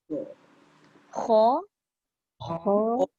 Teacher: kha tu pangkal lidah kita naik tapi tengah lidah tu tak naik. Jadi infitah.